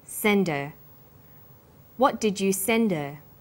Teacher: send is the strong form and her is weak because her is not stressed we drop the initial hurt sound so it's pronounced sender what